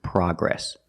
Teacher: We don't say progress. The American pronunciation is progress, with the short ah sound, like hot and stop.